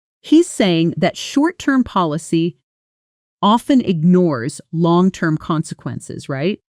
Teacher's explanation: Notice how right jumps up in pitch. This tiny detail is actually a powerful listening clue. · When native speakers ask short confirmation questions like, Right? at the end of a sentence, their voice usually rises sharply, almost like a little musical jump upward.